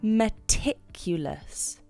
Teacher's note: It's a 4-syllable word. And you can lay stress on the ticulous.